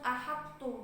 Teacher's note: sifat itbaqnya huruf to itu masih tampak kan, soalnya to itu kan hurufnya lebih berat daripada ta. Jadi bacaan juga nggak perlu dikolah-kolahkan kayak ahad to, tapi langsung ahad tuh gitu karena sudah diidghamkan.